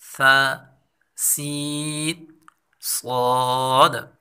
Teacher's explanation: ثا کو باریک اور نرمی کے ساتھ پڑھا جاتا ہے، سین کو باریک اور سیٹی کے ساتھ پڑھا جاتا ہے، صاد کو پر اور سیٹی کے ساتھ پڑھا جاتا ہے۔ ان تینوں کی آواز ایک جیسی ہے لیکن صفات میں فرق ہے۔ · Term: ہم آواز حروف